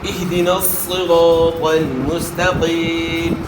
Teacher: صاد بھی موٹے حروف میں سے, طا بھی موٹے حروف میں سے, ان کو آپ نے موٹا ادا کرنا ہے. موٹا ادا کرنے کے لیے زبان کو تالو کی طرف اٹھانا ہے. اچھا اور اس کے بعد پھر اہدنا الصراط, را کے اوپر زبر ہے, را کو موٹا ادا کرنا ہے.